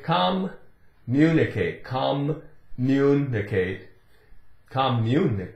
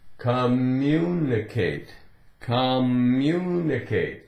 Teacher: there's no break the way it said the two M's really they just run together